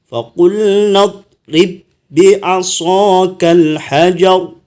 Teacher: Namanya idgham mithlain atau idgham harfi mithlain. Ini disebut namanya memasukkan ba yang pertama kepada ba yang kedua. Jadi hilanglah memantulnya, sifat memantulnya.